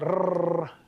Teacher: So the rolled R, the rrr sound, that's the alveolar trill, where you're holding your tongue fairly close to your alveolar ridge and getting the air to flow and holding your tongue in such a way that your tongue flutters in the breeze as it goes by.